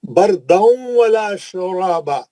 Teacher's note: تنوین کا ادغام مع الغنہ حرف واو